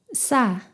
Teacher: 혀에 강한 긴장과 힘을 주고 강하게 마찰을 일으켜서 스 하는 딱딱하고 팽팽한 소리를 냅니다. 목구멍에 힘을 주어 성대가 긴장하는 느낌이 있습니다. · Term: 쌍시옷